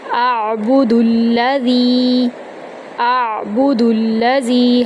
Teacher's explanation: حمزہ کو عین کے اندر داخل کرتے ہوئے عین کی آواز وسط حلق سے نکالیں گے · دال کو لام کے اندر داخل کریں گے